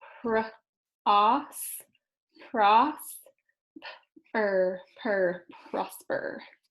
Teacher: Since it's closed, we know the O is going to say ah. The door is shut. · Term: closed syllable